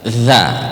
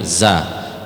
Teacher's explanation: Jadi jangan sampai keluar angin jangan ada desisnya dza kalau kalau ada angin keluar itu dza berarti itu masih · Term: huruf dza